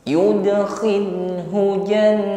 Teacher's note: nun tasydid ditahan terlebih dahulu hingga berdengung, baru dipanjangkan.